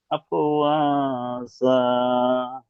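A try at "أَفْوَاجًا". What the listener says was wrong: যা হয়ে যাচ্ছে, মানে দাঁতের গায়ে জিহ্বাটি ঠেকছে, দাঁতের গায়ে ঠেকবে না। আফ ও যা, যা, জিহ্বার আগাটাই দাঁতে লাগলে তবে যা উচ্চারিত হবে, আর দাঁতের গায়ে না ঠেকে উচ্চারণ, হ্যাঁ, সেই যা উচ্চারণ হয়ে গিয়েছে, যা হবে না, যা, যা। প্র্যাকটিস করবেন বেশি করে। হামজা জিম জাবার আজ, হামজা জিম জের ইজ, হামজা জিম পেশ উজ, আজ, ইজ, উজ। ঠিক এইভাবে প্র্যাকটিস করবেন জিম।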